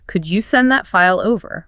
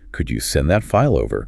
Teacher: A polite request naturally goes up in intonation at the very end of the sentence. · The English listener still registers it as a demand, not a request. You have to physically lift the end of the sentence to show you are asking, not telling. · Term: rising light pitch